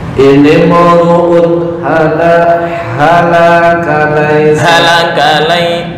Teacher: Nah, nggak boleh dengung. Uun ha, ya, tanwin bertemu ha adalah idhar halqi. Ini mu'un Halakalai pendek semua.